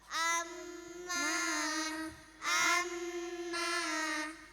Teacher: nun dan mim dengan tasdid harus dibaca dengan bunyi sengau panjang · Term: ghunnah mushaddadah